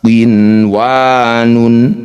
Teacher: Nun sukunnya tidak usah didengungkan, baca dengan jelas. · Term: idhar wajib